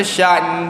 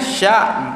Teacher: Boleh dengungkan dia kerana huruf nun memang makhraj hidung.